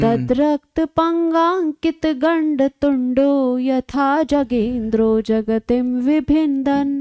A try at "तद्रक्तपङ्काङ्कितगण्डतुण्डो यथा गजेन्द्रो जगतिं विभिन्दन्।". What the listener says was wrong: गजेन्द्रो न जगेन्द्र। तद्रक्तपङ्काङ्कितगण्डतुण्डो यथा गजेन्द्रो जगतिं विभिन्दन्।